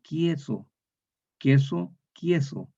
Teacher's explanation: Pero en Chile no decimos queso. Le intercalamos como una yod